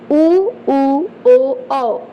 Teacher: देखिए आपका मुंह जो ओठ है उसकी आकृति बिल्कुल गोलाकार में हो जाएगी · तो नाम ही से स्पष्ट हो जा रहा है वृत्ताकार स्वर। जिस स्वर के उच्चारण में हमारा मुंह, ओठ की आकृति बिल्कुल गोल हो जाती है वो वृत्ताकार है